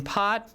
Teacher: the aspirated p occurs in the front position right as in part as in pad